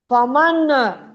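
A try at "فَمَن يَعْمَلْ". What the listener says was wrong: فمن نہیں، میم کو یا سے ملا.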